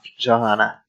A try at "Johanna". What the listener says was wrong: It's a yo. Stop. The J is silent. It's yo.